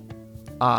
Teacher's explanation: A is another unchanging, never-bending vowel.